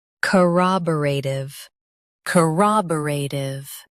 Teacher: Stress rah and keep tiv light.